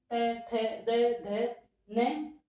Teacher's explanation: हमारे जो जीवा है वह दांतों को टच करती है · इन सब का उच्चारण स्थान दंत को माना गया है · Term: दंत वर्ण, दंत्य वर्ण